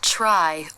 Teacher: the lips will need to come into an even tighter circle to make the R in this cluster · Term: R sound